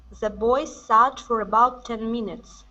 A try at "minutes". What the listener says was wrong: Okay, now on minutes, instead of minutes, okay, use the short I sound. Minutes.